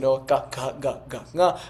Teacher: those are sounds you can make without your lips and tongue at the back of your throat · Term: gutturals